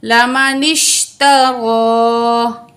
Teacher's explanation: نون کی زیر کو شین سے ملائیں گے، الف نہیں پڑھا جائے گا، را کے اوپر کھڑا زبر ہے، 1 الف کے برابر کھینچ کے پڑھیں گے۔